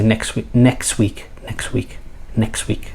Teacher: the tea again is uh dropped